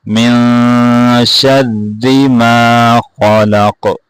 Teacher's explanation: یہاں پہ غنہ ہوگا, را کو بھی باریک پڑھیں گے